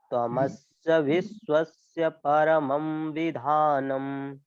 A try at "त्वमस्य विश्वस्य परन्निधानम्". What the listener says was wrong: निधानम, परमम नहीं, परम। त्वमस्य विश्वस्य परन्निधानम्।